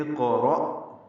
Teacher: اقرأ کا حمزہ عارضی ہے، زیر لگا کے قاف سے ملا دیں گے، قاف ساکن ہے، اس پہ قلقلہ پر ہے، را بھی پر ہے، اور اس کو حمزہ سے ملائیں گے۔ حمزہ ساکن روایت حفص میں جھٹکے سے پڑھا جاتا ہے